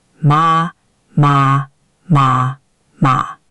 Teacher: But your fourth one didn't fall far enough. It sounded a little like a second tone going up.